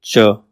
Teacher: तालवी इसमें तालू से जीव टकराती है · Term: तालव्य